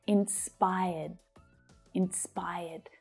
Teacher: Now that final D is a soft D sound. So when it's spoken, you hardly hear it.